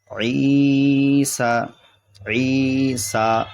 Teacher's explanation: یہ سین کا کھڑا زبر ہے اس لیے کھینچیں گے اسے